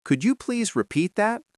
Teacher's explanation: Notice how could you frequently sounds like could ya or could you in rapid speech. The D and Y often merge.